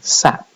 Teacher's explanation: when we put this phoneme at the end of the word it gets uh produced as an unreleased thing